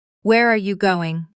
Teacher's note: Letting your voice drop slightly on going.